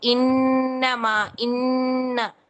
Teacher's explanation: नून पूरा शो भी हो रहा था और उसके साथ-साथ बिनबिनाहट गुनगुनाहट भी हो रही थी। मकूल नून शो हो रहा है लेकिन आवाज़ थोड़ी सी मर्ज हो गई है। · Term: पहले दर्जे